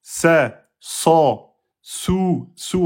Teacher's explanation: le sad, on va gonfler l'arrière et ça sera une lettre emphatique.